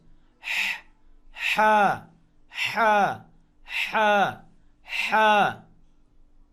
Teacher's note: হা, হলকের মাঝখান থেকে মাখরাজ